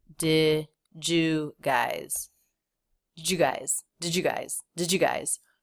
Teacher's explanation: the word did super, super fast, and the D and Y combined to make that J sound, Jew. Jew guys.